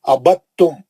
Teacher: دال کو چھوڑ دے کے با سے سیدھا تا میں چلے جائیں گے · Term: ادغام متجانسین